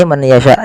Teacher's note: yaitu memasukkan nunnya kepada huruf ya, dan hukumnya yaitu idgham bi gunnah